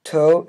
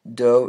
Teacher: To is voiceless. Do is voiced.